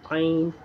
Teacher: आइन इब्तिदाई हलक से अदा होता है आइन, जहाँ से हा अदा होता है वहीं से आइन अदा होता है।